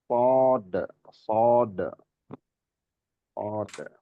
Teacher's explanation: isti'la itu mengangkatnya pangkal lidah ke langit-langit atas bagian dalam. Istilah yang menghasilkan suara tebal dan berat.